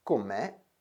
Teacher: o come in italiano come è molto simile all'italiano come ma viene pronunciato con una o breve e chiusa che in genovese si realizza con quella che è l'equivalente di una u italiana